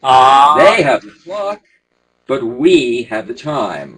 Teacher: you've got to make that contrast between they and we. So it's a double contrast emphasis.